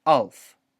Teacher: a sound that you make by closing off your glottis, and that we make all the time subconsciously, and that's really hard for us to even notice. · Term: glottal stop